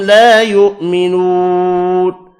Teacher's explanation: لا یؤمنون الف مدہ اور واو مدہ کو 1 الف کی مقدار میں کھینچ کر پڑھیں گے